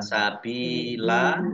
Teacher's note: Sabilan dibaca sabila karena wakof namanya mat iwat. Ya, mat iwat dibaca panjang 2 harokat.